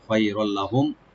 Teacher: মিম সাকিন এখানে জাহার করব আমরা, এজাহার করে করব, গুন্না হবে না